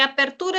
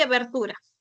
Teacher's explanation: La diferencia se debe a fonemas sordos. P es sordo, pero B es sonoro